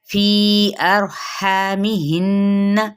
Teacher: فی کو بھی یہاں پہ مد ہونے کی وجہ سے 4 حرکات لمبا کریں گے ، را پور پڑھا جائے گا، ہا پہ مد اصلی بالالف